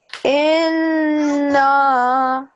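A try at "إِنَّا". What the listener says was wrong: Yeah, a little bit longer.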